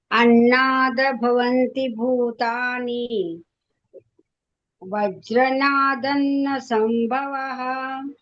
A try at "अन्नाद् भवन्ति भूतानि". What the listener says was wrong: ಮಾತಾಜಿ ಅನ್ನಾದ್ ಅಂತ ಕಟ್ ಮಾಡಿ. ಅನ್ನಾದ ಅನ್ಬಾರ್ದು, ಅನ್ನಾದ್.